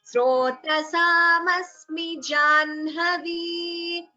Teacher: It should not be Jahnavi. The ha is not heard first. It should be Janhavi. The na should be heard first, followed by ha.